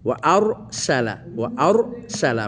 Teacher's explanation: ওয়া আর সালা, ওয়া আর সালা, মুখ মোটা হবে, রর জায়গায় পুর হবে, কিন্তু সিন পুর হবে না